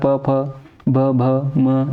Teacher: और प वर्ग हमें पता है कि इसका उच्चारण कहाँ से होता है, औष्ठ से होता है। तो यानी कि फ का उच्चारण स्थान क्या हो जाएगा आपका, औष्ठ हो जाएगा